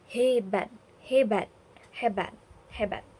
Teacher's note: Bunyi hambat berubah menjadi hambat geser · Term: afiksasi, afiksasi atau pemaduan